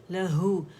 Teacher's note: ہا وہیں سے نکلے گا جہاں اس کا مخرج ہے اقص الحلق سے